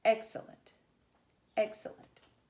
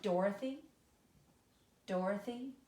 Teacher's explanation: It's stressed, unstressed, unstressed. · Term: Dactyl